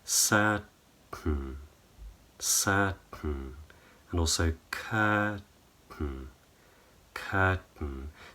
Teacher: But for example, certain, So what I'm doing is I'm keeping my tongue up against the roof of my mouth on what's called the alveolar ridge, the gum ridge, and then I'm not dropping my tongue to make the T. I'm dropping what's called the soft palate. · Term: nasal plosion